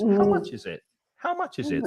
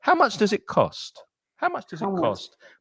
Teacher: I would use a lot of intonation with these questions. How much is it? How much is it? So the voice goes up and down.